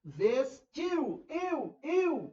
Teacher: O I é forte e o U é fraco. Um ditongo decrescente. Ficam na mesma sílaba.